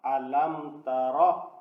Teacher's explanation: اب یہاں میم ساکن کے بعد میم اور با کے علاوہ الفاظ ہے، اس لیے یہاں اظہار شفوی ہوگا۔